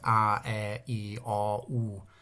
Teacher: the vowel sounds are very pure, a bit more like Basque almost